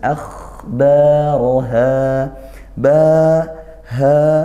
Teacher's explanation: fathah diikuti Alif akhbara dibaca panjang satu Alif atau dua harakat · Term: Mad thi'i